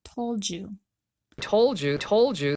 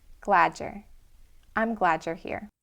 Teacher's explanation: Finally, we have another common reduction between the D and the Y sound in told you. The D plus the Y sound will turn into a J sound.